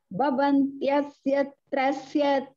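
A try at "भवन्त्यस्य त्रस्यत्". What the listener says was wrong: Not bhava. Bha. Mahaprana. Bha. B. Bhavantyasya. So B has to come nice. B. B sound cannot be B. Bhavan.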